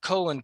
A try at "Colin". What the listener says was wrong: You said Colin. Sorry, it sounded like you said colon. Very similar.